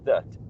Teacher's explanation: we can say that with a schwa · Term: weak form